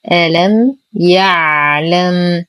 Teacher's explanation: نرقق الهمزة واللام. لدينا ميم ساكنة وبعدها حرف الياء الحكم إظهار الشفوي مع غنة ناقصة